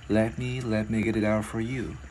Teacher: Cái chữ T liên qua chữ O thành chữ D tiếng Việt nhẹ